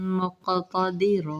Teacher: وقف کی صورت میں دو زبر کو ایک پڑھیں گے